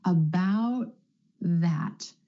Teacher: the tongue tip stays up for the T and goes straight into the th sound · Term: held T